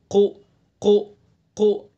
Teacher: زبان کی جڑ اور اس کے مقابل اوپر کا تالو وہاں سے ادا کریں گے